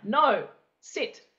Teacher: So you're very direct. You're very forthright. Your tone of your voice goes down.